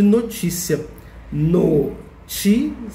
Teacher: Notícia tem 3 sílabas. O ti é a sílaba mais forte. E nesse caso, o ti de notícia está acentuado.